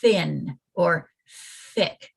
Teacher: turn your voice off like thin or thick right there's no vibration there